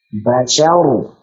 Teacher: Sya-nya tipiskan dulu, baru ra-nya tebalkan.